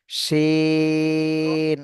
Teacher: শিন কিন্তু মোটা আওয়াজে হবে শিন শাসা শব্দ বের হবে